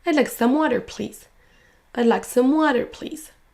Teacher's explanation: Le mot water va être prononcé plus fort, plus longtemps que les autres.